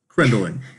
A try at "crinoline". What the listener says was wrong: Crinoline. There's no D in it.